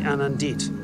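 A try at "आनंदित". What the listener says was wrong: Anandit. The emphasis is on the first syllable.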